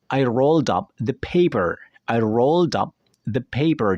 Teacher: Jadi suara deh-nya ini digabung dengan kata setelahnya apabila kata setelahnya itu diawali oleh huruf vowel.